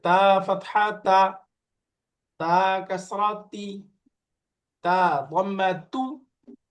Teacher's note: এই যে জিহ্বার আগা, উপরের দাঁতের গোড়া